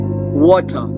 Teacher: for the Indian and for the British the R is usually silent sound